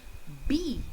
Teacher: see my lips are coming together. Air is stopped when I speak.